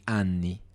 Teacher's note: You have to stress there's a doppia N, double N there, so it has to be anni and not anni, which means something else.